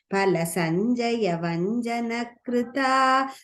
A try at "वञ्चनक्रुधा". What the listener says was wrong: Sorry, in third line la vanchana krudha, second dha.